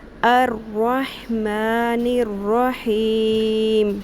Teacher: جب بھی آیت کے اختتام میں آ، ای، او کی ساؤنڈ آئے گی، یعنی مد اصلی کی ساؤنڈ آئے گی، تو اس کو ہم کھینچ کے 3 الف کے برابر کر دیں گے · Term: مد عارض